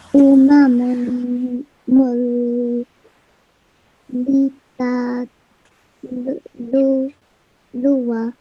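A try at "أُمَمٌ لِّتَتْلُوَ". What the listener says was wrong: Umamulitatluwa. And in this tanween, we are not making any noon sound because we are joining it with lam mushaddad or lam with shadda. So tanween or noon sakin, when followed by lam mushaddad or raw mushaddad, we don't make any noon sound.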